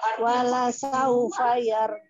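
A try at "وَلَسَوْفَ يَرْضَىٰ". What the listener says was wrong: Yar nya agak tebal sedikit Yar diangkat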